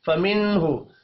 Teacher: नून साकिन के बाद हा है, इजहार हल्की होगा, गुन्ना नहीं होगा